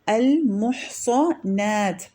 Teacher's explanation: المحصنات میں صاد تفخیم ہے، ہیوی ہے، اور نون ترقیق ہے، باریک سے پڑھیں گے